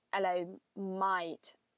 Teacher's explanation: you kind of roll your A and the I together